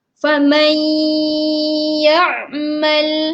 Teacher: Okey, sama juga cara dia, bacaan dia adalah kita memasukkan dengan kita menghilangkan bunyi nun tersebut, kita masuk ke dalam ya dengan dengung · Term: idgham ma'al gunnah